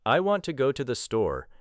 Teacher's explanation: The important rhythm may fall on want, go and store. The words I, to and the become shorter. The sentence moves from strong beat to strong beat. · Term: stress-timed